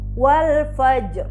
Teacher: Dan sebelumnya lagi berharokat fathah wal fajr. Nah, maka ro-nya dibaca tebal atau tafkhim.